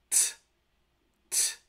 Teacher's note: If you hold your hand in front of your mouth when you pronounce this letter, you should feel a distinct puff of air. Similarly, the unvoiced alveolar stop is also aspirated